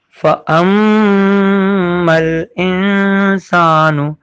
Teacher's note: فَأَم کا میم بھی کھینچنا ہے ایک الف کے برابر کیونکہ یہاں پہ تشدید ہے، غنہ بھی ادا ہوگا، یہ ناک سے آواز نکالی جائے گی